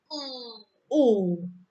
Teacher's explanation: bagian lidah bagian belakang itu naik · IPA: uː